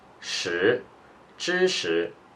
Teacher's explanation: 识, this character is with the second tone.